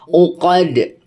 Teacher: Alif lam yang kali ini karena huruf au-nya dibaca, maka ini adalah alif lam qamariyah. Ketika alif lamnya tidak dileburkan terhadap huruf selanjutnya, maka u-nya tetap dibaca terang.